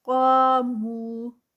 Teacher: قا پہ 2 کاؤنٹس، الف مدہ، مو پہ 2 کاؤنٹس، واو مدہ